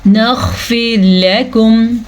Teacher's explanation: را ساکن سے پچھلے حرف کے نیچے زیر ہے تو را ساکن باریک پڑھی جائے گی